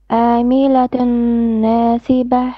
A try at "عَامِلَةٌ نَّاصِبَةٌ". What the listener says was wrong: Make your ayn more clear. عاملة ناصبة.